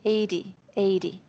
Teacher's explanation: I'm saying the T like a D